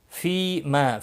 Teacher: فی ما، فی یا مدہ ہے، ما مختلفو، ما مد نہیں پڑھنا ہے یہاں پر۔ فی یا مدہ ایک الف کے برابر کھینچ کر پڑھیں گے